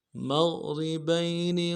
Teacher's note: با کو یا کے ساتھ ملانا ہے، یا لین بغیر کھینچے پڑیں گے